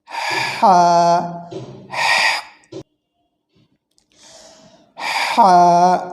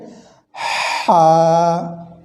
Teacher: যেটি দেখছি আমরা এটি উচ্চারণ হবে কণ্ঠনালের মধ্যখান থেকে হা অর্থাৎ কণ্ঠ দিয়ে আগে বাতাসের শব্দ বের হবে তারপরে এর উচ্চারণটা আসবে